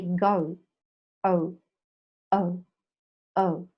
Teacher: And shorter and not prolonging the u sound. In UK, they pronounce and prolong the u sound.